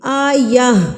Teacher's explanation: جب ہم اس پہ وقف کریں گے تو یہ گول تا گول ہاں میں تبدیل ہو جائے گی